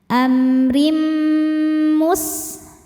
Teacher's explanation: Rim ada hukum idghamunah. Karena tanwin kasrah menghadapi mim, maka tanwinnya dileburkan ke mim disertai dengung